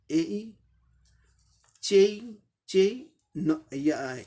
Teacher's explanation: ए का ए ई दोनों साउंड मिलके बोलना पड़ेगा